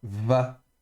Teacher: sans dagesh léger, est fricative ou spirante ou douce, et donc ça se prononce va